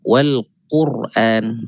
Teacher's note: ra yang mati sebelum dia baris depan, maka kita perlu tebalkan dia. Wal Quran.